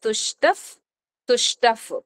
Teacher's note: తుష్టఫ్ ప ముందు వచ్చింది ఎఫ్ అవుతుంది